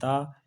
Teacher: ये सघोष है लेकिन अल्प प्राण है।